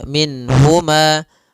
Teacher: Yaitu mengeluarkan setiap huruf daripada makhrajnya tanpa disertai dengan gunnah pada huruf-huruf yang dia dijelaskan, yaitu huruf nun. Nun di sini harus jelas karena bertemu dengan huruf ha, maka tidak boleh ditahan. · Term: izhar, izhar halqi